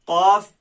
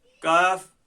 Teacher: कौफ ये जुबान की जड़ से निकला, काफ ये जुबान की जड़ से थोड़ा आगे के हिस्से से जब ये ऊपर तालु के साथ टकराया तब अदा हुआ।